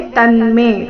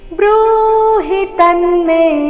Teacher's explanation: ತಮೇಲೆ ಆಘಾತ ಮೇ ದೀರ್ಘ